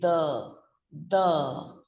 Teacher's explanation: the th sound puts the tip of the tongue in between your teeth when i'm saying the the my tongue is going between my · the tongue in between your teeth when i'm saying the the my tongue is going between my upper jaw and the lower jaw teeth